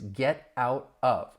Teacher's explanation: you're going to hear me with my American accent pronounce those T's as a flap T because they come between two vowel sounds